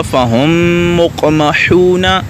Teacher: میم ساکن کو دوسری میم میں مدغم کرنا · پہلی میم کو دوسری میم میں شامل کر دیں گے، داخل کر دیں گے، ٹھیک ہے، تو یہ ہو جائے گا فہم مقمحون۔ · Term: ادغام شفوی